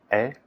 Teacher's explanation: la vocal E se produce de forma similar al I, pero con la boca un poco más abierta, E, como en el español.